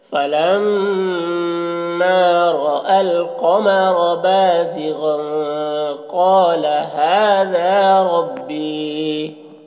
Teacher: तनवीन में इख्फा करेंगे, तनवीन की आवाज़ को नाक में छुपा कर पढ़ेंगे · गैन को पुर पढ़ेंगे, ये हुरूफ मुस्तालिया में से है